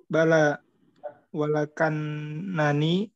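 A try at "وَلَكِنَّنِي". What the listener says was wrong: walakinnani lakinna bukan laka. Laki lakinnani.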